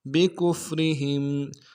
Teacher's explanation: را کو باریک ادا کریں گے، ہا کو میم ساکن کے ساتھ ملانا ہے، میم ساکن میں غنہ کریں گے